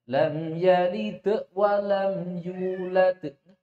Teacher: Jangan ditambahi hamzah. Ini sering terjadi kesalahan qalqalah tambah hamzah.